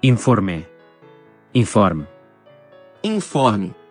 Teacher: la E final se ha reducido en Portugal y se ha convertido en I en Brasil